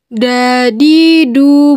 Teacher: keluar dengan cara menyentuhkan ujung lidah ke gusi bagian atas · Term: huruf da